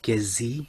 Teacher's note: midtone prefix affixed to the stem which is also mid-tone and in the output we get gesi which has a mid high tone sequence